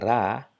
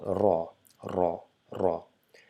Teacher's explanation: instead of saying ra, you just make your mouth a little bit round to produce the sound raw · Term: round our mouth